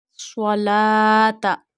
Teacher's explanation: Join noon with swad because swad has a tashdid sign on it. Swalata. So when tashdid comes on any letter, the letter become mushaddad.